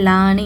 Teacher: அலி மத்த முன்னாடி பதஹா இருக்குது அதனால இரண்டு ஹரக்க நீட்டி ஓதுங்க